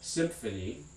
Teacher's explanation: before the labiodental ph generally that nasal before is going to also be labial labiodental symphony and that m with the little tail here is going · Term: labiodental nasal